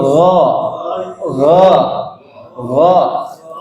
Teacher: Ghairil maghdubi alaihim waladdallin. Ya, gha bukan seperti kita mengucapkan bahasa Indonesia G, tapi ada serak-seraknya sedikit